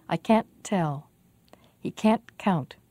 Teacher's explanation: the not part is difficult to hear but the vowel ah is very clear